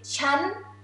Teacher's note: i for a woman is rising tone